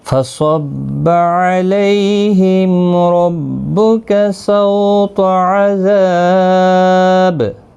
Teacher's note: صاد مستعلیہ ہے، پر پڑا جائے گا، علی لی یالین ہے، میم کا اظہار ہوگا، را پر پڑا جائے گا، سو واولین ہے، تو بھی حروف مستعلیہ ہے، پر پڑا جائے گا، ذا ذا الف مدہ ہے، با ساکن ہوگا وقف کی صورت میں، اس پر قلقلہ بھی ہوگا، 3 سے 5 الف کی مقدار کے برابر کھینچ کر وقف کریں گے۔